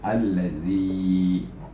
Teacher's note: ya sukun, bunyinya yi, iaitu dengan hukum asli dua harakah. Jadi kita baca allazi, kemudian nun baris di atas na, allazina.